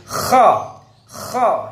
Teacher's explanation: Suaranya dilepas, bahasa Arabnya rokhawah. Kemudian lidah kho ini lidahnya ingfitah, lidah renggang. Maksudnya lidah tidak terkatup.